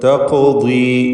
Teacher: തഖുദി, ഇവിടെയും നേരത്തെ സൂചിപ്പിച്ച കാര്യം തന്നെ ഖാഫിന് ഖൽഖല സുഗ്റ, തഫ്ഖീം ഇവയൊക്കെ നൽകുക. ദ്വാദിന് കുറഞ്ഞ തഫ്ഖീം കൊടുക്കുക കസ്റായതുകൊണ്ട്